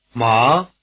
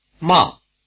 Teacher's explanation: the second tone or Rising tone word hemp and the fourth tone or falling tone word to scold ma ma again hemp and to scold Rising versus falling ma